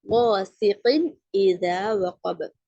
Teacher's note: நூனுடைய சவுண்டை வெளிப்படுத்தணும். அப்போ கிளியரா ஓதணும். வாசிகின் இதா வகப, நூனுடைய சவுண்ட் கிளியரா கேக்குது இல்லைங்க, அப்படி ஓதணும். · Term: இஸ்ஹாருடைய சட்டம்